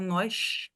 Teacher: Pode ter som de sh em alguns sotaques, como quem fala nós, né? Um som de X.